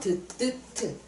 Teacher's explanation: 혀 끝이 잇몸을 건드리는 거기 때문에 잇몸 소리야. 잇몸에서 방해를 해.